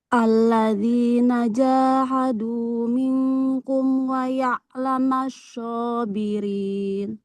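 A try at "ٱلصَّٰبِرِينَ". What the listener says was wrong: Boleh diulang apa huruf shadnya jangan jadi show ya, tapi so. Satu huruf saja, so. Nah, jadi makronya sama dengan sini ya, ujung lidahnya ke ujung gigi seri yang bawah. Cuman dia tebal. Kalau show, nanti makronya pindah jadi kayak shin. Jadinya yang menekan itu bukan ujung lidah lagi, tapi tengah lidah.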